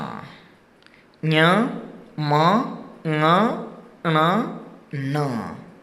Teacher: आगे का उच्चारण स्थान है वो नासिका। नासिका, नाक से।